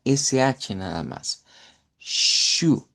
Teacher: ch se pronuncia como que fuera sh nada más